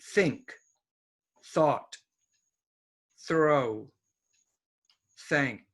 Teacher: this is theta no voice at the beginning of most words